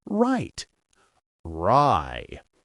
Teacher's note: The tongue does not touch anything in the mouth. It is slightly curled or bunched upward. Air flows freely through the central channel. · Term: Pure R